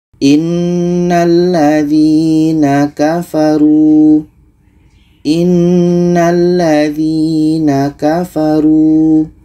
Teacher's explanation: ya mati sebelumnya baris di bawah kita panjangkan dua harkat